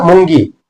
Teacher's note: मुंगी म्हणताना तो गी लांबतोय